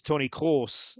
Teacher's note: the German R is like a guttural R that comes from the back of your throat. So it's like imagine sort of gargling a little bit, but this so it's Toni Kroos is how that is said, which I know is difficult to replicate.